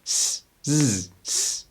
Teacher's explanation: want you to transition into that z sound so for example nothing's changing physically I'm just humming and not humming that's the only difference